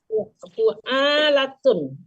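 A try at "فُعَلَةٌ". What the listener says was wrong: Enggak panjang, fu'alatun aja. Aja kan pakai alif, fu'alatun.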